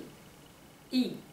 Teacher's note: Ce qui va jouer, c'est sur la voyelle A, qui est une voyelle ouverte, avec la langue basse, et le I, où la langue est remontée, avec un positionnement beaucoup plus sur l'avant